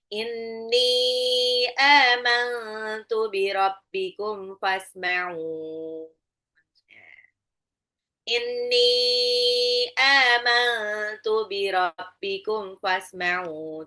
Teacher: nunnya ghunah ya karena dia nunnya tasdid juga